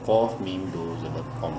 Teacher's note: قاف کو بولڈ بھی کرنا ہے اور میم کے ساتھ ملاتے ہوئے غنہ بھی کرنا ہے